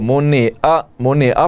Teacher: اسی طرح منع, منع یہ عین ہے آخر میں, بہت سے لوگ عین کو واضح نہیں کرتے, اس کو منع پڑھتے ہیں, حمزہ کی آواز آتی ہے